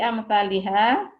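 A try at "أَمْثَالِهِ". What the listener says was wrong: Nggak ada alifnya. Di amsalihi minal mutamar.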